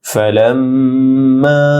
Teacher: লাম মিমের সাথে যুক্ত হয়ে মে গুন্না হবে, মা তিন আলিফ লম্বা হবে